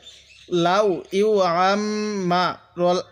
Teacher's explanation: আইনটা একটু চাপ দিয়ে পড়বো এবং মিমের মধ্যে একটু গুণনা করব, কারণ মিমের মধ্যে তাজদিদ গুণনা করা ওয়াজিব।